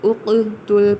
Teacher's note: قاف ساکن ہے اور قطب جد میں شامل ہے، یعنی یہ قلقلہ کیا جائے گا، یعنی اس کو ساکن ہونے کی حالت میں بھی ہلایا جائے گا